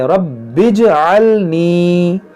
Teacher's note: ربی جعلنی نہیں پڑھنا آپ کو، ربج یہ با کو جیم سے ملا دیں گے، ربج جعلنی.